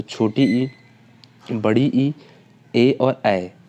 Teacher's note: अग्र स्वर की बात करें तो छोटी ई, बड़ी ई, ए और ऐ हमारे अग्र स्वर कहलाते हैं।